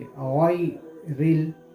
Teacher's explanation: रा के नीचे ज़ेर की हरकत है, तो रा को हम बारीक पढ़ेंगे